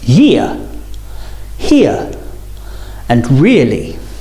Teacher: So as you say ear, your mouth should open a little bit, starting on the I and finishing on the ear. As in the words year, here, and really. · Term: diphthong